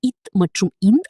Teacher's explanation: இத் மற்றும் இந்த் ஆகிய எழுத்துகள் மேல்வாய் பல்லின் அடியை நாக்கின் நுனி பொருத்துவதால் பிறக்கின்றன